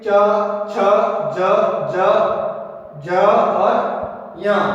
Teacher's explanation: इनका उच्चारण है तालु से होता है, इसलिए च वर्ग को तालव्य व्यंजन कहते हैं।